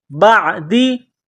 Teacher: عین گلے کے درمیان سے زور لگا کر عین کو نکالنا ہے